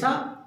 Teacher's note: जिसपे हम दांत पे ज़्यादा जोर देते हैं वो दंती सा होता है, दंत सा। ठीक है, दांत से उच्चारण होता है उसका, तो ये सा।